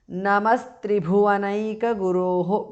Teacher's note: Visarga changes to su there.